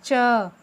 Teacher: उसके बाद च कहाँ से बोला जाता है, तालु से। देखिए जब मैं च बोल रही हूँ तो मेरी जिह्वा तालु पे लगेगी